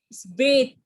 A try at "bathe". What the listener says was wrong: It's you are talking th at the end. Th. You are using bath. Bath. Bathe.